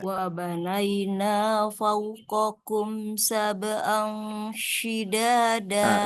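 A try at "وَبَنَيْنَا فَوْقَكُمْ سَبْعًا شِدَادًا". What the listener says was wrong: Sab'angnya kurang tahan, Bu. Sab'an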